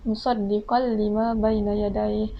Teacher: Nazzala 'alaikal kitaba bil haqqi musaddiqan lima baina yadayhi, di mana hukum idgham bila gunnahnya terdapat pada huruf tanwin, iaitu huruf qaf, iaitu dia berbaris tanwin atas bertemu dengan huruf lam, iaitu musaddiqan lima. Di situ kita tidak perlu dengungkan.